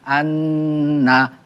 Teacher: নুনের উপর তাসদিদ হইলে গুন্না করিয়া পড়িতে হয়, ইহাকে ওয়াজিব গুন্নাহ বলে। যেমন আলিফ নুন জবর আন, নুন জবর না, আন্না।